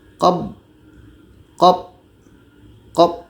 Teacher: sebelum masuk kepada Qalqalah akan ada terjadi syiddah suara tertahan